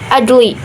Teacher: Terdapat huruf jim atau huruf qalqalah barisannya mati atau sukun. Cara bacanya dipantulkan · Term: qalqalah sugro